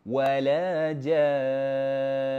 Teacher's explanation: kita leretkan sikit dengungkan bacaan dia ya dua harakat